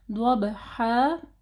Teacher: ضاد کو ہیوی پڑھیں، با کے اوپر جو ہے سکون ہے، ٹھیک ہے، تو با کے اوپر کلکلا ہوگا. ضبحا یہ الف مدہ کو پڑھنا ہے، ٹھیک ہے.